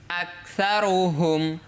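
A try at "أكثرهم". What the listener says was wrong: বেশ, মাশাআল্লাহ।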